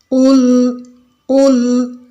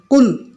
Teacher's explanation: kalau tawasud itu tidak terlalu panjang seperti rikhwah dan tidak terlalu padat pendek seperti syiddah. Jadi tengah-tengah.